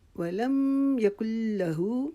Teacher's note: اور ہمارے اکثر یہاں پر پڑھنے میں غلطی لوگ کرتے ہیں، اس کو پڑھتے ہیں ولم یکن لاہ، کل لاہ نہیں پڑھیں گے. لا اگر ہم پڑھیں گے تو اس میں ہم نے الف ڈال دیا